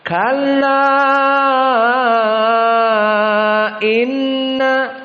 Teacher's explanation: Maka di sini kalla inna dibaca oleh qiraah yang kita pelajari yakni Wars dalam keadaan wajib 6. Tidak boleh kurang. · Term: mad al-munfasil